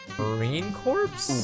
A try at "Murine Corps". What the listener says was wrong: You said corpse.